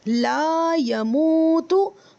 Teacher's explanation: لا کو لمبا کریں گے الف مدہ کی وجہ سے، اور یہ مو جو ہے اس کو لمبا کریں گے واو مدہ کی وجہ سے، اور یا اور تا جلدی پڑھیں گے.